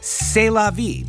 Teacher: in French, the C sound went even a step further when followed by an E, all the way to S. This is even easier on the mouth.